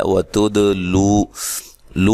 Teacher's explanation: دال پہ قلقلہ کرنا ہے